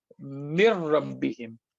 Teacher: Noon is gone, and we connect meme to ra, mir rabbihim. So noon as a letter is gone, and the sifa, the attribute, the quality of noon, which is the gunna, is also gone.